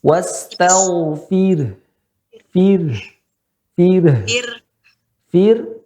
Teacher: Ro keadaannya sukun. Sebelumnya kasr, berarti tipis.